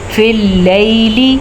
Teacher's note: لام باریکی کے ساتھ پڑھی جائے گی, اور لام زبر یا لئی یا لین بھی ہے, تو اس کا بھی آپ نے خیال رکھنا ہے. یا لین نرمی سے پڑھا جاتا ہے اور بغیر کھینچے پڑھا جاتا ہے